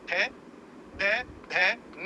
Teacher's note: भैया जीभ दांत में टकराएगी तो उसको दंत कहेंगे।